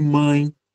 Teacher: Então, se há o encontro de duas vogais, como em mãe, o som de A e o som de I, né? O A nasal, inclusive. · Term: ditongo